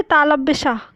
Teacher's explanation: तालव्य श, तभी तो कहते हैं इससे तालव्य श, क्योंकि ये तालु से बोला जाता है।